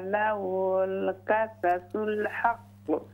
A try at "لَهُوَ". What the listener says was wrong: लहु वल वाव क्लियर करें। इन्ना हाज़ा लहुल क़ससुल हक़्क़।